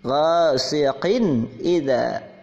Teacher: Idza, oh maaf, sebelumnya ada ghasiqin, ada kasrah menghadapi hamzah. Ini dibaca jelas, idhar.